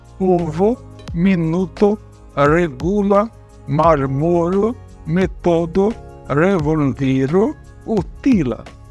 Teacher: o acento vai ser na penúltima sílaba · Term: paroxítonas